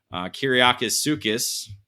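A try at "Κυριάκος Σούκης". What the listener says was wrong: No S. Kyriakos Soukis.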